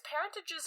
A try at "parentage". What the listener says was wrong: Yeah, I think you're not saying it with the right emphasis at the right spots, but yes.